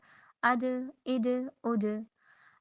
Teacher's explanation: ज़बान का दरमियान और ऊपर की मुंह का छत का दरमियान जो है, तालु का दरमियान जो है वो आपस में लग रही हैं, मिल रही हैं, तो फिर जीम अदा हो रहा है